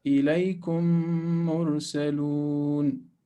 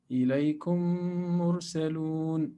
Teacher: So meme, second, followed by another meme. Both of them are merged or coalesced.